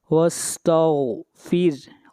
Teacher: یہاں پر غین ہے، غین حروف مستعلیہ میں سے ہے، اس لیے غین کو موٹا پڑھیں گے